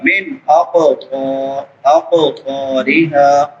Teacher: قاف موٹے حروف میں سے ہے اور قاف حروف قلقلہ میں سے بھی ہے۔ قلقلہ بھی کریں گے یعنی ہلا کے پڑھیں گے اور اس کو موٹا بھی کریں گے